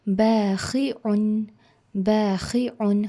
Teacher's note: جب ہم خا پڑھتے ہیں تو ہم کو تھوڑی سی خراش لانی ضروری ہے